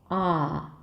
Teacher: change it into American sound 'aa' A back open 'aa'